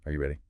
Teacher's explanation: For yes, no questions, the voice usually goes up at the end. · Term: intonation